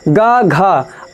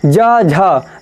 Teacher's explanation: अगर इन वर्णों को आप बोलते हैं तो इनसे जो ध्वनि निकलती है उनके साथ आपको एक गूंज की आवाज़ सुनाई देगी, गूंज जैसी लगेगी। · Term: सघोष वर्ण